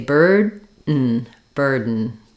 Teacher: the N functions as the vowel and the consonant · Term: syllabic N